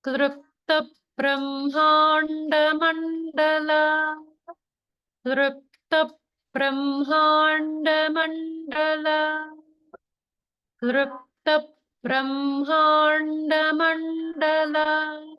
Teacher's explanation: we have one of those rare words that has the L vowel in it